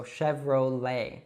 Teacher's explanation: you should actually just leave off that T sound at the end and pronounce an open E